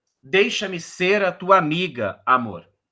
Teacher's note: a décima sílaba obviamente vai ser forte porque o verso termina na última sílaba tônica · tem um tom mais forte na quarta sílaba poética e Na oitava sílaba poética que estão em vermelho aqui o que tá em verdinho é